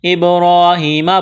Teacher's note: علی اس یا کو نہیں پڑھیں گے، یہاں مد ہے، اس کو کھینچنا ہے. ابراہیم با پر قلقلہ کریں گے، را کو موٹا کرنا ہے، را کے اوپر کڑا زبر ہے.